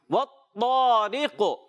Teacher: جی ہاں پیارے بچوں طا حروف مستعلیہ موٹے حروف میں سے اور ایکسٹرا موٹے حروف میں سے، یعنی اس کو بہت زیادہ موٹا کر کے ادا کریں گے. را کو باریک رکھیں گے اور قاف موٹا ہے اس کو بھی حروف مستعلیہ ہے موٹا کریں گے مگر ایکسٹرا موٹا نہیں کریں گے.